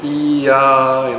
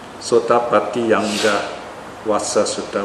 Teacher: It's a natural flow, see, because you say E, A, so you get a Y sound in the middle, so they had the Y infix there, so that when you say it flows. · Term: euphonic combination